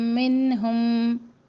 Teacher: نون کا یہاں پہ اظہار کرنا ہے کیونکہ نون ساکن کے بعد ہا حرف حلقے میں سے ہے